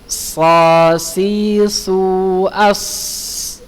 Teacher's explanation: Huruf shad ya, huruf shad sama kayak huruf zai dan huruf sin ya. Sifatnya shafir, berada di ujung lidah pada posisi dua gigi seri bawah. Lalu suara keluar melalui celah di antara dua gigi seri atas dan bawah ya.